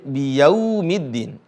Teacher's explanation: kalau wau sukun mengarah kepada huruf u bukan O